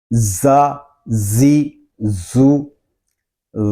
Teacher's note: زا اور ذال کو باریک پڑھیں گے، زا میں سیٹی کی آواز آئے گی